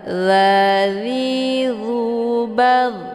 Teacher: Cara bacanya dha ini dialirkan dan dia ada desis angin yang agak samar-samar. · Dia posisinya di ujung lidah, ditempelkan ke ujung gigi seri bagian atas. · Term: dha sukun